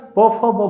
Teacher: साधारणतः यांचा उच्चार हा ओठांपासून होतो. जेव्हा फुफ्फुसातून निघणारी हवा ओठापाशी येऊन थांबते, ओठापाशी येऊन ती हवा अडवली जाते आणि अडवल्याच्या नंतर त्या हवेचा तिथे एकदम स्फोट होतो · तुम्ही बघा प, फ, ब, भ चा उच्चार करत असताना प, फ, ब, भ या सगळ्या ध्वनींचा उच्चार करत असताना हवा ओठांपाशी येऊन थांबते आणि एकदमच स्फोट होऊन त्या ध्वनींचा उच्चार होतो, म्हणून यांना ओष्ठके असे म्हणतात.